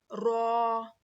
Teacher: जुबान के किनारे को सामने के चार दांतों के मसूड़ों में लगाने से र अदा होता है